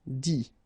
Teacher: phonetically you pronounce i because final t is not pronounced